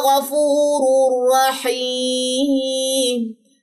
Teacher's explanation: یہاں پہ بھی تنوین کے بعد را ہے، غنہ نہیں کیا، جسٹ ہم نے ادغام کیا ہے